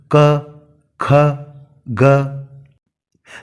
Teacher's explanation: इनके उच्चारण में जब अवरोध को हटाया जाता है तो अंत में स्वर यानी अ की ध्वनि आ ही जाती है। इसलिए व्यंजन स्वरों की सहायता से ही उच्चारित होते हैं।